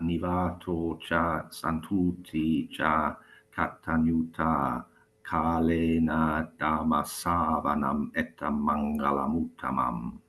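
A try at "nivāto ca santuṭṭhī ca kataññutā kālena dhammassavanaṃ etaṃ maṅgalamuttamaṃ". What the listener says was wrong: you were doing the same with the cha. It sounded like having a cup of cha. And you just recite the first line again with special emphasis on keeping the cha short. You can either pronounce it as a cha as in northern India, or even a ch, which is how Shirinamala and Dili and Sinhala speakers would pronounce it. But the important thing is to keep it short.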